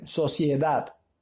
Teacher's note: la mayor fuerza de voz está en la última sílaba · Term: palabra aguda